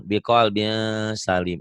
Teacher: Kan ikhfa, biqalbin ada angnya. Tapi jangan ang banget. Biqalbin ada n-nya tapi ang.